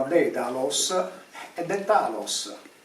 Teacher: Ma se noi andiamo a studiare la parola Daedalus, è Detalos, perché la D intervocalica, la T sorda intervocalica, noi la sonorizziamo in D